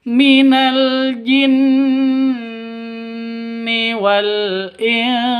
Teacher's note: Di sini ada nun tasydid. Nun tasydidnya berdiri sendiri, berarti gunnah musyaddadah, dengung dua ketukan